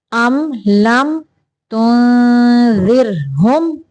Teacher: یہاں پہ را کو باریک پڑھیں گے کیونکہ را کے پچھلے حرف کے نیچے زیر ہے